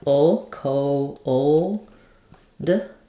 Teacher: But really, we do have a little bit of a schwa sound before that dark L.